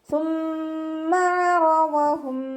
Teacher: നമ്മുടെ നാവിൻ്റെ അറ്റവും മേലെ മുൻപല്ലിൻ്റെ അറ്റവും ചേർന്നിട്ടാണ് സാ പുറപ്പെടുന്നത്. സീനിൻ്റെ സൗണ്ട് കൊടുക്കാതെ ആ ഒരു സൗണ്ട് തന്നെ കൊടുക്കാൻ ശ്രദ്ധിക്കുക കേട്ടോ.